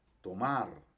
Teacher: es una a larga y este también un poquito acentuada · Es una A larga y también un poquito acentuada, como por ejemplo cuando nosotros en español decimos la palabra tomar, tomar. Entonces es una A un poquito larga, un poquito acentuada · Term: kamatz gadol